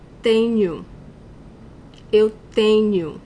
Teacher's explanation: When a word ends in O, and the last syllable is not the stronger syllable in the word, there is no graphic accent on this final O, it is common for us to pronounce it as a U, the Portuguese U.